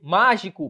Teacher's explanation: A sílaba tônica está recaindo aqui sobre a antepenúltima sílaba. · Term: proparoxítona